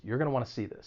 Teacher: gonna wanna it's not stressed and again that's why it's reduced